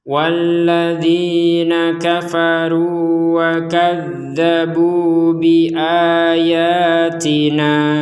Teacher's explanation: Harakat bendera kita harus memanjangkan lima atau enam harakat ketika menggabungkannya dengan hamzah yang ada di depannya.